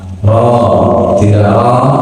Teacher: roh itu harus tebal karena barisnya fathah